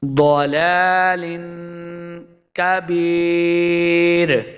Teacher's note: را پہ وقف کریں گے، را کو پھر ہم نے موٹا نہیں کرنا